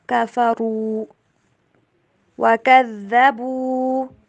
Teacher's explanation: را کو موٹا کر کے پڑھنا ہے